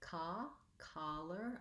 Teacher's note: collar has the ah vowel and that's an open unrounded vowel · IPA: ɑ